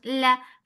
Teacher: fatha open jaws, the sound is short.